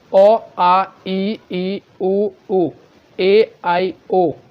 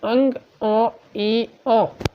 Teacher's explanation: जो हवा है वो केवल मुंह से निकल रहा है, नाक से जो है आपका शब्द नहीं निकल रहा है। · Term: निरानुनासिक